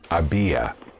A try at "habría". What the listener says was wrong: The R is important. Habría, because without the R, había would be I had.